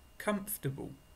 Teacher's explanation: it looks like four sounds four syllables but when we speak like natural speakers we often use only three comfortable I write the phonetic transcription by the word as well